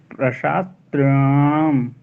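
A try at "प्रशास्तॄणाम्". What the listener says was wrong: आप त्री को स्किप कर रहे हैं। अरे महाराज, री दीर्घ है तो री को खींचिए ना।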